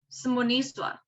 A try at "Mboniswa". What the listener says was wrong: Mboniswa, ma'am. Without the is.